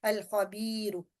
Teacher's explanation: تو اگر خواہ موجود ہے تو ہمیں پتہ ہے کہ پھر ہم نے لام ساکن کا یہاں اظہار کرنا ہے، مین کہ ہم نے لام ساکن کو یہاں پڑھنا ہے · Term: لام ساکن کا اظہار